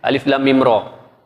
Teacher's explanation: alif baca alif tak ada harakat, lam 6 harakat, kemudian ada dengung 2 harakat. Kemudian mim 6 harakat. Lepas tu tidak ada dengung.